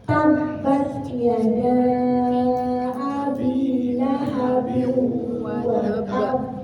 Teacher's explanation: Nah, ketika kita mengucapkan huruf ba, ini ketika ada tasdid kemudian dia di akhir ayat, maka kita tasdidkan dulu huruf ba-nya, kemudian baru diqalqalah